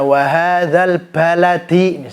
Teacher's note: Qalqalah jadi karena dia sifatnya adalah Johar jadi enggak ada nafasnya jadi ketika kita mengucapkan huruf b jangan sampai ada nafasnya